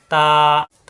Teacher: জিব্বা উপরে দুই দাঁতের গোড়ায় লাগবে